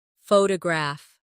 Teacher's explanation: The stress is on the first syllable, photograph.